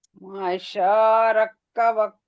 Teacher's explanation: کیوں کھینچ رہے ہیں سورتم بس صورة صورة ما شاء ركبك شاء کھینچے گا اور حمزہ کو جلدی پڑھیں گے